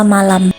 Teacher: M pada umumnya dengan ciri hidup, nasal, dan bilabial